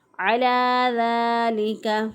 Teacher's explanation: ذال کھڑی زبر دا، ایک الف کے برابر ہم نے اس کو لمبا کرنا ہے تو لام زیر لی، لام کے بعد جو ہے بعض لوگ یہاں پر یا داخل کرتے ہیں عَلَى ذَلِكَ تو غلط ہو جائے گا۔